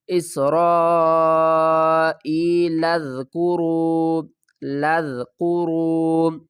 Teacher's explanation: اس را، ای حمزہ یا زیر ای، یا ساکن سے پہلے زیر ہے، حروف مدہ ہے۔ اس را ای، لام کو ذال سے ملائیں گے، الف کو نہیں پڑھیں گے